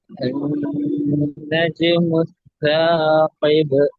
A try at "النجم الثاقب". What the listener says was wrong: சா அல்ல ச.